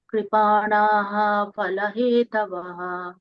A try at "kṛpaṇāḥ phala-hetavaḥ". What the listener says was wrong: Kṛpaṇāḥ. Kripa. Kṛpaṇāḥ. So give less emphasis on the PA.